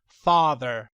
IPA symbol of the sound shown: ɑː